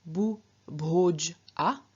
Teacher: we here have bu, the reduplicative syllable, which consists of the unaspirated equivalent of bh. So instead of bh, we get b.